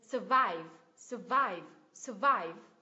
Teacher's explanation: Nhấn vào tiếng thứ hai này, vive, vive. Âm thứ nhất là schwa sound.